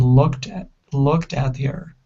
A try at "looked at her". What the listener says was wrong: So it's looked at her, looked at her. So switch that T to a flat T or a D sound, right?